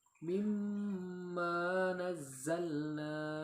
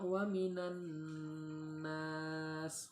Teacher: ia harus dibaca dengan gunnah atau dengung yang sempurna dengan tempo 2 harakat.